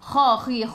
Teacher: Kha khi khu biar ada angin dan menggelegak